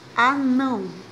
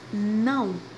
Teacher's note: A palavra anão, observe que não, ela está com a tonicidade bem mais forte. E ela aparece na última sílaba. Note que aqui é primeira, segunda e aqui é a última sílaba. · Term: sílaba tônica